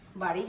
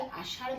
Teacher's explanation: তাড়নজাত ধ্বনি। জিভের ডগা উল্টে দাঁতের গোড়া স্পর্শ করে খুব দ্রুত আবার নিচে নেমে আসে। নেমে আসার কারণে খুব দ্রুত গতিতে কাজটি সম্পন্ন হচ্ছে বলে এই ধ্বনি দুটোর নাম হচ্ছে তাড়নজাত ধ্বনি। · জিভের ডগার উল্টো পিঠ দাঁতের গোড়ায় স্পর্শ করার পরপরই জিহ্বাটা নিচের পাটি দাঁতের উপরে উছলে পড়ে। খুব দ্রুত গতিতে প্রক্রিয়াটা সম্পন্ন হয় বলে এটাকে তাড়নজাত ধ্বনি হিসেবে চিহ্নিত করা হয়েছে।